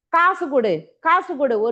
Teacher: இந்த சூவும் இந்த டூவும் தனக்குரிய ஒரு மாத்திரையில ஒளிக்காம அரை மாத்திரையா குறைந்து ஒளிக்கும் எப்படி சொல்றோம் பாருங்க காசு கொடு காசு கொடு உராய்வு தன்மையில சொல்றோம் அப்ப · அளவு அரை மாத்திரை அளவு ஒலிக்கிறது குசுடு துபுறு ஆகிய ஆறு வல்லின உகரங்கள் சொல்லின் இறுதியில் வரும்பொழுது ஒரு மாத்திரைக்கு பதிலாக அரை மாத்திரை அளவே ஒலிக்கும் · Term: குற்றிய லுகரம், குற்றியல் உகரம்